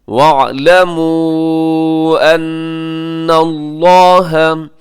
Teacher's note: یہاں جو مد ہے وَاعْلَمُوا پہ یہ مد منفصل ہے. ان اللہ، نون مشدد پہ غنہ ہے، لفظ اللہ کو موٹا پڑیے گا کیونکہ اس سے پہلے زبر ہے.